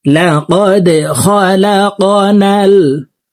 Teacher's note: দাল কলকলার হরফ নিচের দিকে ধাবিত করে ধাক্কা দিয়ে উচ্চারণ করতে হবে।